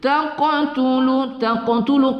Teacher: qaf berbaris sukun kita baca qalqalah ya, qalqalah sughra sifatnya ya